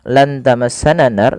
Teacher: Kemudian ketika melafalkan lan tamassanan naru, pada lafal nunnya lan tamassana nar, nunnya disamarkan kepada huruf ta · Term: ikhfa